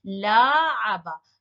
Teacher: the extra addition of a long vowel after the first letter, the extra alif or the long vowel.